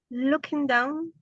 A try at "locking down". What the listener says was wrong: Locking. Not look. Looking is look. No. Locking. Lock, it means protection.